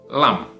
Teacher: Lidah bagian depan sesudah makhraj dot tadi, ya, maka lidah bagian depan ini ketika bertemu dengan gusi bagian atas, ya, itu adalah tempat keluarnya huruf lam. Lam, ya, lidah bagian depan bertemu dengan gusi atas